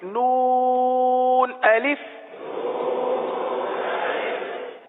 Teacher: نون کو 3 الف تک کھینچ کے پڑھیں گے